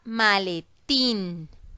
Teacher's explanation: la fuerza de voz que se encuentra ubicada en la última sílaba es decir que la sílaba tónica está al final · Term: palabra aguda